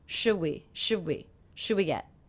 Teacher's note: one of the things I noticed is I'm dropping the D sound